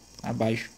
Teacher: Na maioria dos casos, quando o X vai ter som de CH, ele é mais chiado, né?